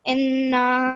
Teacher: There's a noon with a shadda, so you will prolong the sound for 2 seconds